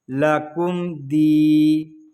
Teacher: اس کو لکم دی اس طرح نہیں پڑھیں گے، میم ساکن میں غنہ نہیں کریں گے، یہاں پر اظہار شفوی ہو رہا ہے